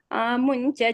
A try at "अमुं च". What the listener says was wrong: one place you put an oh, I think amuncha. I think you said amuncha or something. Amuncha chikshepita.